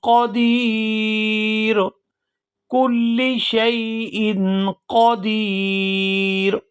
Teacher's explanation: یہاں دال کو یا ساکن کے ساتھ ملائیں گے تو کھینچ کر ادا کریں گے کیونکہ یہ یا مدہ ہے، اور آخر سے را کو وقف کی وجہ سے ساکن کر دیا جائے گا، اور یہاں وقف کی صورت میں مد ہوگی۔